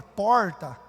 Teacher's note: no meu português, paranaense, com esse R retroflexo que eu tenho, de falar porta, vem lá do Paraná.